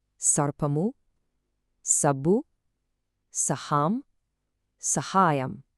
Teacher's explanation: This is just your standard everyday sa sound. You know, like in snake or sun. No tongue curling